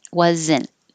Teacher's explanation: So you don't hear the T. You just hold your tongue in the T position, which is the same as the N.